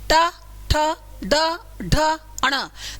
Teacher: अच्छा, जब इनको बोलेंगे हवा का प्रेशर तालू पर होगा, च छ ज झ य, आपकी जीभ ऊपर की ओर उठकर रगड़ खा रही है, च छ ज झ य, खा रही है ना रगड़, तालू को रगड़ खा रही है, ठीक है। इनको जब बोलते हैं आपकी जीभ मूर्धा को टच करेगी